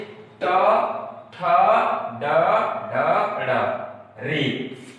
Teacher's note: हमारी जीवा जो है वो मूर्धा पर आघात कर रही है, तो जिसके कारण इन वर्णों का, हिंदी वर्णमाला के इन वर्णों का उच्चारण स्थान हो गया मूर्धा।